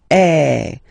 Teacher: the sound that you will have to produce is eh. So it's really open. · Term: accent grave